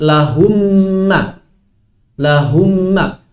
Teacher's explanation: Maka sebetulnya mim yang pertama sudah hilang. Mimnya lahum sudah hilang. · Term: idgham